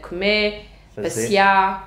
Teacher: a gente é como se fosse pôr um acento, a gente corta o R e a gente acentua